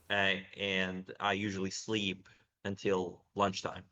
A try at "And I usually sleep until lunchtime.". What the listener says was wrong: Again, I usually sleep until lunchtime. I would put the stress on lunchtime. I usually sleep until lunchtime because sleep has already been established as the verb of focus, and so we don't need to put such a stress on it.